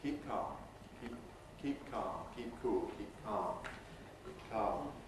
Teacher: the P at the end of keep may well have its release masked by the C of calm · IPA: [ˈkiːp̚ ˈkɑːm]